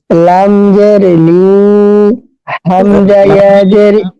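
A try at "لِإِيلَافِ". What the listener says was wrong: আচ্ছা, লামজের লিতে টান দিলেন, এই টানটা কিসের টান? কেন টান হলো?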